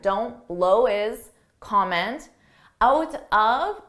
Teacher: notice on his I dropped that H and I combine those two together